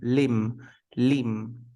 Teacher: limb Lim the B is not pronounced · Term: silent